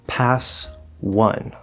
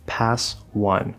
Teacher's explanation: It starts with the W sound, W, which is a consonant. The word one is W, schwa, and an N sound, N, one, just like the past tense of win.